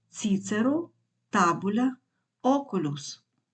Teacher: наголос переноситься на третій склад від кінця слова якщо склад від кінця слова короткий